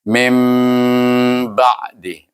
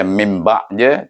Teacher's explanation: Dia mesti mim berdengung kat pangkal hidung kita, huruf mim bunyi tu, itu makna betul lah iklab kita.